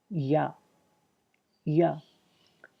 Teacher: تو اب دیکھیں، یا ادا کریں، یا زبان کا جو درمیان کا حصہ ہے وہ اوپر تالو کی طرف اٹھ جاتا ہے اور وہ لگتا ہے، دیکھیں اب وسط زبان اور اوپر کا تالو، ٹھیک ہے۔